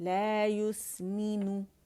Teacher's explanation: جو ہماری کسرہ ہے اسے مجہول نہیں پڑھیں گے. ٹھیک ہے, اور اس پہ کمپلیٹ رولنگ کریں گے یا کے اوپر.